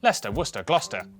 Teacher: cester is pronounced ster